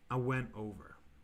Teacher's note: sometimes i'm just lazy sometimes i just don't say the t sound